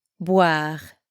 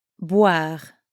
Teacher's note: Boire also has that same wa sound as froid and moi, and it ends with our favorite French R sound.